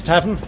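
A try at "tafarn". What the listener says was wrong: it's an F, not a V.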